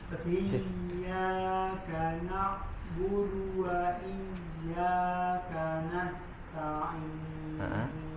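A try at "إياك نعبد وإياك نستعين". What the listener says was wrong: Lebih dialirkan dok huruf ainnya.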